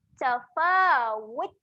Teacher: Huruf ta ketika mati, dia ada keluar angin. Tafawut. Keluarkan bisikan angin sikit.